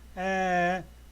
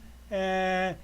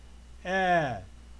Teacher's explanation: the a sound notice that my mouth is wide open a my tongue is rested behind my teeth my tongue is down a and the sound is here in the throat a okay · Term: short e